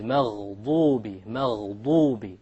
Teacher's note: It is very important that you don't make a dad into a dal or a d sound, because the dal comes from the middle of the tongue, but the dad, remember, it comes from one entire edge of the tongue along with the molars.